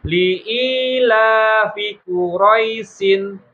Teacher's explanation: Jadi ya-nya itu sukun, jangan ditambahin i lagi